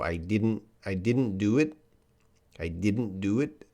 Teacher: When I say it now, didn't, the T is a little bit strong, but I'm sure in a sentence, the T is probably reduced